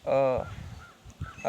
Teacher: अ को उच्चारण में कम समय लगा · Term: ह्रस्व स्वर